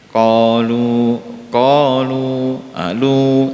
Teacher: Lu-nya tetap hati-hati dijaga 2 harokat saja, karena ini kalau berhenti di sini lu itu mad tabi'i.